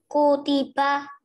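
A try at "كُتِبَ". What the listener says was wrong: Betul.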